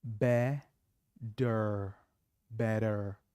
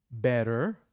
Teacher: In American English, the t becomes d. For example, B-E-T-T-E-R becomes better.